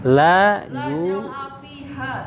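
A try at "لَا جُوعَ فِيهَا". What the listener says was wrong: ju'a bukan jau'a ju'a. La ju'a.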